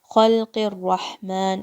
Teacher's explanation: Qaf has a kasra and it's going to join with the ra.